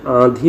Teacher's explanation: लेकिन अगर इसी को थोड़ा सा हम ट्विस्ट करके आंधी बोलते हैं अगर, तो हम देख रहे हैं कि यहाँ पर जो आ की आवाज़ निकल रही है, ये आ के बाद जो अनुस्वार आया है ये नाक से बोला जा रहा है। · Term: नून गुन्ना